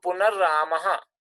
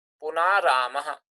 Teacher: if two rays are coming together the first one is dropped and its vowel is lengthened